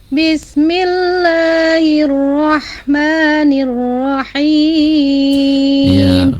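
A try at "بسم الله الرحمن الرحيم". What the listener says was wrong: mengalirnya sin sukun dan hak sukunnya kurang dikit ya. Bismillahirrahmanirrahim.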